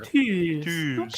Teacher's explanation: The word for fire in Hungarian is spelled T-U with two accents, and then I guess from Great Britain you'd say Z or Z for our American, but we pronounce it tuz. So you actually have to hold the U a little bit longer.